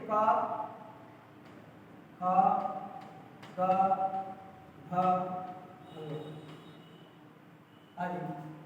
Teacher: ये जो वर्ण है आपके कंठ से उच्चारित होते हैं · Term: कंठ्या वर्ण